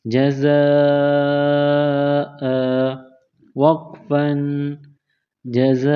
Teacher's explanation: 2 زبر کی تنوین کو الف سے تبدیل کریں گے